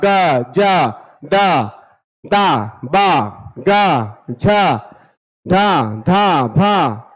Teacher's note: उच्चारण करने पर झंकृत होता है स्वर यंत्र का है ना जिस वर्ण का उच्चारण करेंगे वो स्वर यंत्र का झंकृत होगा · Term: घोष